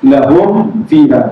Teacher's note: tutup rapat bibir untuk tidak membunyikan, untuk tidak mengeluarkan dengung pada mim. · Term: izhar syafawi